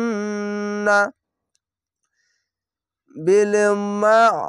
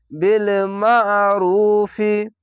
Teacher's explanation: বিল মা, এখানে আইনটিকে মোটা করে গলা চিপে পড়বেন